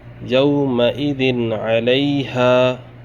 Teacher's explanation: ذال کے نیچے دو زیر تنوین ہے، آگے عین آ رہا ہے، حروف حلقی میں سے ہے۔ اب ہم نون ساکن کو ظاہر کر کے بلا گنہ جلد پڑھیں گے